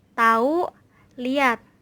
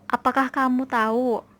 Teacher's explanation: Dan pada alofon H yang ditandai dengan strip, dalam posisi tengah di antara dua vokoid yang tidak sama. Kadang-kadang H-nya itu dihilangkan.